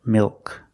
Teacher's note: After a vowel at the end of the word, we use the dark L.